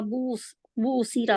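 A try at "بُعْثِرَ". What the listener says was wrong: बूसीरा नहीं, आइन तो फिर आपका आता नहीं है ना, इसकी प्रॉब्लम है। आइन नहीं आ रहा। आइन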